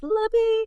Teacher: the T often drops, the vowel in me weakens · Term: lemme